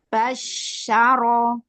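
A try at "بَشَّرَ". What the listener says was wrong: Jangan diangkat suaranya. Nadanya, arah pengendalian suaranya jangan di atas. Ke bawah kan. Basyaro.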